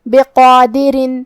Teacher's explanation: حرف الراء کے نیچے تنوین زیر ہے، تو را کا حکم ہے ترقیق، ہم حرف الراء کو پتلی آواز میں پڑھیں گے · مد الف اپنے پیچھے والے حرف کا حکم لیتا ہے تفخیم میں اور ترقیق میں، تو جو کہ قاف کا حکم ہے تفخیم، ہم قاف کو اور مد الف کو دونوں کو بھاری آواز میں پڑھیں گے